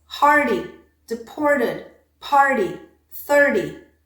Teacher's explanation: If you have a vowel followed by an R, followed by a t, d, followed by an unstressed vowel, that t, d, also changes into a flap sound.